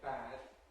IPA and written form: bæd (bad)